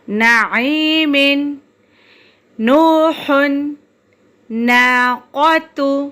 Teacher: نون کا مخرج طرف لسان جب ثنایا رباعی انیاب کے مسوڑوں سے لگے، نعیم، نوح، ناقۃ.